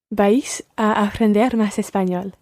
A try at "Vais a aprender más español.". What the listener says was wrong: Yeah, vais. It's almost like one syllable. You're pronouncing it ever so slightly as two syllables there, vais. But run them together and just say vais. Vais a aprender más español.